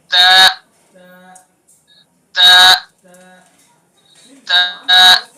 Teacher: تو زبان کی نوک کو ثنا علیہ کی جڑ پر لگائیں اور ادا کریں.